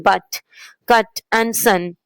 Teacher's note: the vowel U moved from a rounded sound to an unrounded central sound. This happened because English speakers preferred relaxed mouth positions. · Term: unrounding